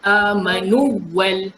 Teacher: Jadi jangan tergesa-gesa nak kata ini idgham. Tak boleh kita idghamkan amanu wal, tak boleh ada dengung dekat waw. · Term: izhar